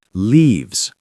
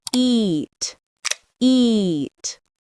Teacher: Longer, clearer, with a slight smile. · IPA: /iː/